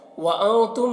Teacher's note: वअन्तुम नून में इख्फ़ा होगा, मीम में इजहार शफवी हो रहा है